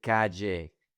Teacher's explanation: In Medellin, most people use the J sound.